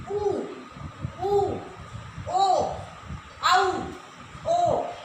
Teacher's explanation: हमारे जो होठ है उन्होंने कैसा आकार बनाया, एक वृत्त की तरह आकार बनाया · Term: वृत्ताकार